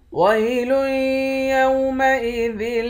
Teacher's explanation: کر پڑھیں گے، آخر میں نون ساکن ہے۔ وَيْلٌ يَوْمَئِذٍ لِّلْمُكَذِّبِينَ، لام کو یا کے ساتھ ملا کر ادغام مع الغنہ کریں گے